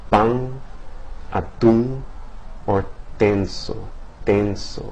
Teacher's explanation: in some dialects, especially in the Caribbean, right, a single nasal consonant might nasalize the preceding vowel.